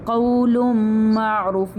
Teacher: یعنی لام کو ہم ڈائریکٹلی میم کے ساتھ ملا دیں گے، ہم نون جو بیچ میں آ رہا ہے چھپا ہوا اس کو نہیں پڑھیں گے